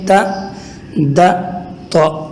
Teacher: تا، دا، تو، ان تینوں کا مخرج یعنی ادا ہونے کی جگہ ایک ہی ہے، زبان اوپر کے سامنے والے دانتوں کے جڑ کے ساتھ لگ جائے تو تا، دا، تو ادا ہو جائے گا